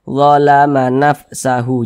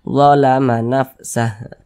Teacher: Huruf H ini tidak dibaca panjang, sehingganya kita sukunkan atau kita matikan. Nah, sehingganya kita baca nafsah.